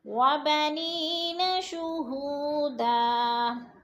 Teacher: وَبَنِی کے نیچے یا مدہ ہے، یا ساکن سے پہلے نون کے نیچے زیر ہے، یا مدہ، اور شہو کے پر وہ مدہ ہے، وہ مدہ کو یا مدہ کو ہم نے 2 حرکات کے برابر کھینچ کر پڑھنا ہے۔